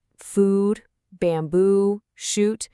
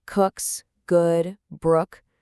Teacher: In this first column, you've got food, bamboo, shoot. They all have that long ooh sound like in boot. But in the second column, we get cooks, good, brook. They have that shorter uh sound like in book.